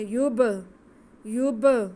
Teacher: یا پہ پیش آگے با ساکن، با حروف قلقلہ میں سے ہے، اس لیے ہم اس کے آواز کو جنبش دے کے پڑھیں گے